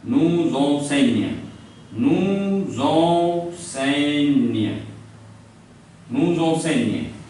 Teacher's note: So this S is coming between U and E, which are the vowels. S, when comes in between vowel, it gives Z sound.